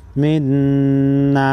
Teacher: नून मुशद्दद पर गुन्ना करेंगे